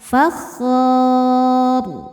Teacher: Karena sebelumnya huruf sukun juga alif, maka yang jadi penentu adalah huruf ketiga yaitu kha. Karena kha-nya berharokat di atas fathah, maka ro-nya ikut tebal. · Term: dibaca secara tafkhim